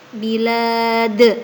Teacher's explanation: Terdapat bacaan qalqala kubro, sebab ada lafadz dal yang dibaca sukun karena waqaf.